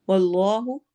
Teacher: वल्लाहु इसमें जलाला है मोटा पढ़ा जाएगा